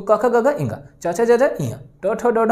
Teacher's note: जैसे आपने बोला क तो कम समय लिया, ख थोड़ा ज्यादा समय, ग कम समय, घ थोड़ा ज्यादा समय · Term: महाप्राण